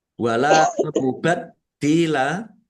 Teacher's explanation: Wala mubat dila lam fathah alif mat tobi'i panjang 2 harokat. Dalnya ada tasdidnya dibaca double, ditahan dan ditekan